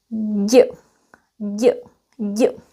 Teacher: You use the tip of your tongue and put it behind your lower teeth like this. And the middle of your tongue goes against the hard pallet. So your tongue is kind of like this. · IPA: /ɟ/